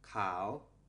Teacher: a high class letter without a tone marker will have a rising tone